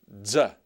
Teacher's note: Zeta makes the sound of a DZ as in z, z, like ads. Z, z. Kind of give that D sound.